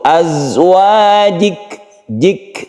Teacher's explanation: kafnya ini juga merupakan huruf yang mempunyai sifat hamas atau mahmus sehingga kita baca seperti ada lelehan di situ. Azwajik, jik ya, itu adalah hembusan nafas ketika kita mensukun kaf itu.